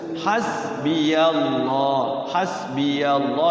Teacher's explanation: lafaz Allah dibaca tafkhim tebal